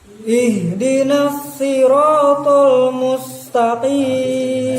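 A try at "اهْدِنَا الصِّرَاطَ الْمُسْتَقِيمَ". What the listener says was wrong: Nah, itu huruf sedikit masuk ke huruf so karena dia terpengaruh dengan ihdinas siratal tapi tidak ihdinas siratal di bawah. Jadi ini perhatikan mus atau kena so imam mus. Nah itu ihdinas siratal mustaqim.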